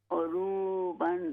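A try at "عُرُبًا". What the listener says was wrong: ہاں جی اس را کو ہم لمبا نہیں کریں گے. عروباً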